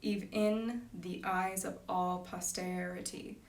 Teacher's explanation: And it's just even in the eyes. Even, we can elide that, we can smush it together to be even in the eyes of all posterity.